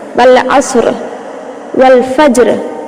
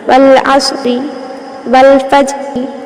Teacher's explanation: दोनों कलिमात में रा साकिन हो जाएंगी, उससे पहले का हर्फ भी साकिन है और उससे पहले है फतह यानी कि ज़बर। तो अब तो रा को पुर पढ़ना है